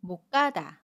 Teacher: 그러면 못가다 라고 발음해요. 받침 시옷은 받침소리 디귿으로 발음하고요. 첫소리 자음 기역은 된소리로 까로 발음한다고 했어요. 그래서 못가다가 됩니다.